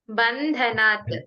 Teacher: ಧ ಗೆ ಮಾತ್ರ ಮಹಾಪ್ರಾಣ ಹೇಳಬೇಕು